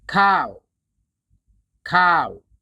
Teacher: Just shape your mouth for the W sound. Don't add an extra sound like w. Let the sound fade naturally.